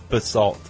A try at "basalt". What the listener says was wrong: You said basalt, and she says it's actually pronounced basalt. With the influence on, or the emphasis on salt.